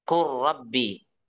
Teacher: Lah jadi kita lamnya hilang. Kenapa? Karena lamnya dimasukkan ke ro.